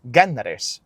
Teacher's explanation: when the letter S gets placed between two vowels, which linguistically we say intervocalically, between two vowels, the S becomes R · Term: rhotacism